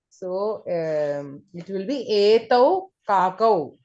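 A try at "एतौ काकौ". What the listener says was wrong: Very good. Etau kakau.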